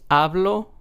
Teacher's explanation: In the word hablo, we are stressing the second to last syllable. So in this word, since there's only two syllables, this would be the first syllable. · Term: word stress